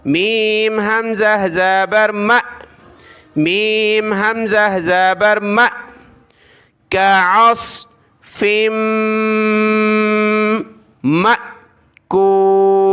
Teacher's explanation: یہ حمزہ ہے ساکنہ حمزہ، یعنی اس پر سکون حمزہ ساکنہ کہلائے گا، اور اس کو پڑھتے وقت ہم نے جھٹکے کی طرح پڑھنا ہے